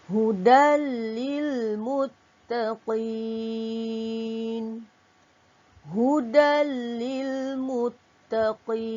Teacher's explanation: tanwin bertemu dengan lam, hukumnya idgham bila gunnah. Dibaca dengan tanpa dengung. Okey. Dan muttaqin, kita kalau wakafkan atau berhenti pada kalimah qin, dibaca dengan hukum mad arid li sukun.